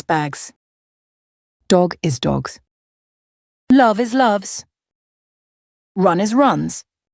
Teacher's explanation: The voiced S which sounds like a zed is used with words ending in B d L M N G R V and Y.